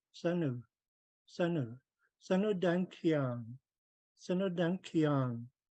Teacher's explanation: Sun and U are going to be pronounced as one word.